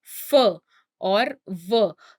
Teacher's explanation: labiodental, that means sounds that are uttered using the lips and the teeth. So when I say f, that means I am using or I am touching my lips and my teeth. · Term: labiodental sounds